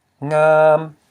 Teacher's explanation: We have the low consonant plus a live syllable which equals a high tone. This is a live syllable. Why? Because it ends in a nasal sound.